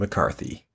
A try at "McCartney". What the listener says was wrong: Did you purposely mispronounce McCartney? Yeah, you said McCarthy.